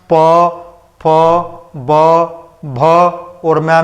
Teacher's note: प फ ब भ और मैं में आप देखोगे पूरा होठ जो है आपस में मिल ही जाते हैं, आपस में टच ही करते हैं पूरा।